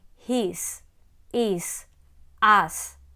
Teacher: They all follow the same pattern of being spelled with an S at the end but pronounced with a Z sound